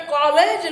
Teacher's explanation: હવે જે 2 વધારાના છે એ વિવૃત એ અને વિવૃત ઓ. તમે કોલેજ લખો છો, કોઓર્ડિનેટર લખો છો, ત્યારે તમે વિવૃત ઉચ્ચારણ કરો છો